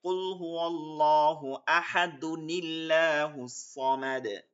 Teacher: জবর হইছে এখন এইটা যখন মিলায় পড়তে হবে তখন এইখান থেকে একটা পেশ উঠে গিয়ে ছোট্ট একটা নুন যোগ হবে যেটাকে কুতুনি বলে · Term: নুনেকুতনি